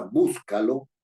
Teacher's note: Estoy poniendo el acento en la anterior a la penúltima, en la antepenúltima.